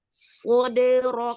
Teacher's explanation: Memang makhrajnya sama tempat keluarnya, tapi perbedaannya sod itu adalah huruf tebal, ya, itbak malahan ya. Kalau sin dia hanya tipis, hanya tidur aja lidahnya. Ketika dia mengucapkan sofirnya itu sama, tetapi angkat pangkalnya ketika kita mengucapkan huruf sod, ya.